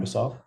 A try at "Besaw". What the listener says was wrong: It's Besaw, buddy. It's not Basaw. Yeah, like it's like a bumblebee and a saw.